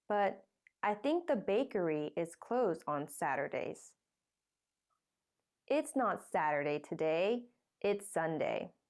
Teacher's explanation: bakery is now old information so it gets a rising tone the new information with a falling tone comes at the end of the sentence